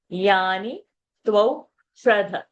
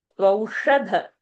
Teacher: Tvau shradha, that dha is a mahaprana.